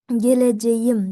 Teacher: mana bu k yumshoq g ga almashadi